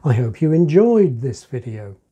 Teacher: 'This video' is given information, it's in the context, it's already on the mind, so I could deaccent it.